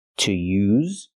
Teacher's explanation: We have the verb to use, making the z sound, the vibration sound like zebra, to use. That's the verb, use.